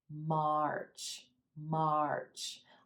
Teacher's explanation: letting that sound and gobble up the ah our our March let that chin come down a bit and let the mouth open for the ah and then rolling into the ER our March March almost making it sound like this is one